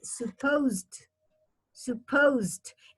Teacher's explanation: it's like from the S you go to the D don't pronounce the e